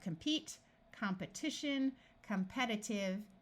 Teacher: notice that when we start adding suffixes to the root compete this long e becomes a short e sound